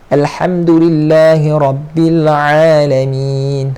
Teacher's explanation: Yang ain makhraj huruf dia di tengah kerongkong. Dia sama makhraj huruf dengan huruf ha. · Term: huruf ain